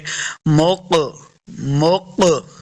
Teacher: ये जो आपको डबल आवाज आ रही है इसी को कलकला कहते हैं।